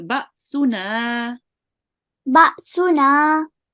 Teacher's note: there is an alif after the noon and the noon has a fatha. So we make it long for 2 counts